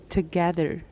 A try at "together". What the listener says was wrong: You're saying two. I don't want two. I want t. Together.